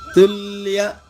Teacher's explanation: కలిసిన అక్షరాన్ని సంయుక్తక్షరము అంటాము దానిలోని మొదటి అక్షరాన్ని రెండుగా చేసి పలకాలి తుల్ అది ల రెండు లాలు అవుతుంది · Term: ద్విత్వం